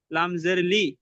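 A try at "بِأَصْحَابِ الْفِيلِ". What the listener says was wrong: ফিলি। লামটাকে সাকিন করেন, বি আসহাবিল ফিল। ব্যাস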